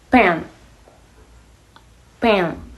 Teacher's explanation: Did you feel a small puff of air